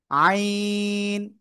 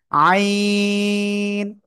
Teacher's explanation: কিন্তু চার আলিফ টান একটু কঠিন এ অক্ষর তাই না আইন গলাটা চেপে চার আলিফ টানে উচ্চারণ করতে হবে